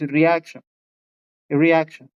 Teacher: la mayor fuerza está en la A. Es una A diferente.